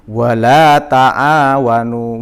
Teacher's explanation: wala itu juga dibaca panjang 2 ketukan.